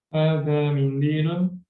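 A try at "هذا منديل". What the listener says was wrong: Intonasinya mungkin ya. Karena itu bukan pertanyaan, jadi jangan naik, tapi turun. Hadza mindilun.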